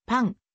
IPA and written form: paɴ (パン)